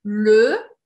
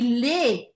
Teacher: Le, bem fechado, le é singular, e les, bem aberto, les é plural.